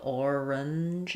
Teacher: the schwa in the middle, orange, is a little bit optional